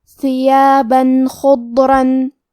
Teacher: ہم یہاں تنوین ظاہر کریں گے اور اسے نون ساکن پڑھیں گے اور بغیر غنہ سے یہ حکم کو ادا کریں گے۔ ثیابا خضرن، کلمت خضرن میں حرف الخاء کی ادائیگی حلق کے اوپر والے حصے سے ہے، خا حروف التفخیم میں سے ہے تو ہم یہ حرف کو موٹی آواز میں پڑھیں گے۔